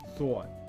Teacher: a lot of rounding that happens on this thought